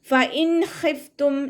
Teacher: നൂൻ സാക്കിനിയെ വ്യക്തമാക്കി മണിക്കാതെ ഓതി കൊടുക്കുക. ഫഇൻ ഖിഫ്തും നൂനിൻ്റെ സൗണ്ടിനെ വ്യക്തമായിട്ട് കേൾപ്പിക്കുക.